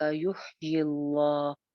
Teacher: یہ باریک رہے گا لفظ جلالہ کیونکہ پیچھے زیر ہے